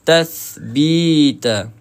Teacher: Pertemuan antara hujung lidah dengan hujung gigi atas. Ha so kita kena keluarkan lidah kita ya. So kita kena keluarkan lidah kita.